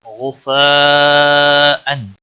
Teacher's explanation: غین حروف مستعلیہ میں سے ہے، پر پڑا جائے گا، بڑی مد ہے، 5 الف کے برابر کھینچ کر پڑھیں گے